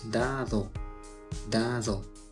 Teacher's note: Así, nos daremos cuenta que al mencionar la palabra dado, la primera D se escucha más firme y breve, mientras que la segunda suena algo más suave y prolongada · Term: alofonía